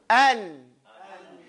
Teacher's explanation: Gunna is capturing the air in your nose.